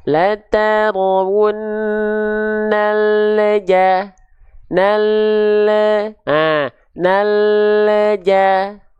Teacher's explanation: kalau teman-teman turunkan dulu lidah huruf lamnya baru melafalkan huruf Jim berikutnya ya pasti ada pantulan